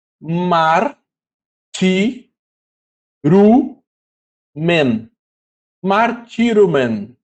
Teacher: Lembrando aqui que esse ditongo, ômicron e y, ele fica com som de u, como em tu. Por isso aqui é ru, tá?